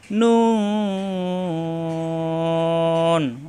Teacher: জিহ্বার আগা উপরে তালু লাগিয়ে নুন